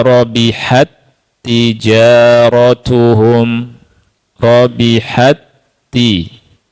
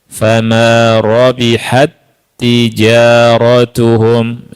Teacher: Huruf pertama dimasukkan ke dalam huruf kedua, dibaca dengan tanpa gunnah. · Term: Idgham mutamatsilain